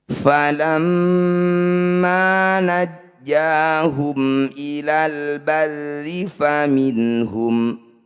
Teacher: Falamma najjahum ilal barri faminhum, nun sukun bertemu ha disebut bacaan izhar halki. Bunyi nun sukun baca dengan jelas tanpa dengung.